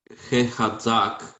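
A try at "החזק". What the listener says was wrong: Yeah, that would be the tzadi. But this is zayin. Z. Chazak.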